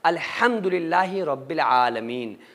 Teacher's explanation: یہ جس کو بڑی ہا بولا جاتا ہے وہ ہا ہے، یعنی کہ بیچ حلق سے نکلے گی۔ اگر کوئی بندہ الحم کو الحم پڑھ رہا ہے اور بڑی آسانی کے ساتھ نکال رہا ہے، الحم کہہ رہا ہے، شروع حلق سے ہا کو نکال رہا ہے، تو یہ لہنے جلی کی غلطی ہے، اور اس غلطی کا کرنا نماز میں قرآن میں حرام ہے۔